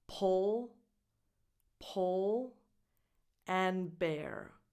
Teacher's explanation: brand but the name is clearly English so it's pronounced po the vowel is the same that you have in book not in school so it's a short vowel